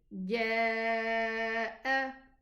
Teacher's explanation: Because the Hamza exists after it, then we elongate our pronunciation. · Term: connected mad